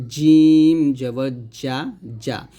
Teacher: জিমটা জিহ্বার মধ্যখান তার বরাবর উপরে তালুর সঙ্গে লাগবে